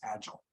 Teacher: because the patterns of north american english are more front loaded when it comes to nouns and adjectives i pronounce this word as agile